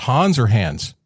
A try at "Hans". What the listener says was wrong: It's Hans. You said it wrong both ways. So it's Hans with a staccato S, not Hans with a Z. a ghost, like a ghost haunts a house. That's how you say it.